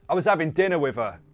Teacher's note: So we dropped the h, we changed the th to a v, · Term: Cockney accent